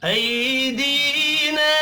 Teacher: نا الف کے اوپر چھوٹی مد ہے، تین الف کے برابر کھینچ کر پڑھنا ہے · نہیں کرنا، ایدینا، ای یا لین ہے، دی یا مدہ ہے، یا مدہ کو ایک الف کے برابر کھینچ کر پڑھیں گے